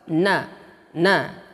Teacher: Ujung lidah bertemu dengan bawah sedikit makhraj lam. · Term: huruf nun